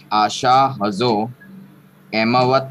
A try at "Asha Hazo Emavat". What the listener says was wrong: Asha Hazo Emavat, you should have taken a pause at Emavat.